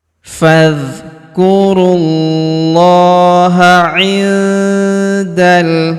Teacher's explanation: Huruf nun sukun bertemu huruf da, maka nun sukunnya melebur ke huruf da, kita baca dengung dan samar. Dengungnya kita tahan 2-3 harokat.